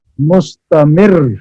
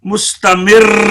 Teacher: را کے اندر زبان کپائے گی اور اس کی ادا میں پڑھنے میں مبالغہ نہ ہو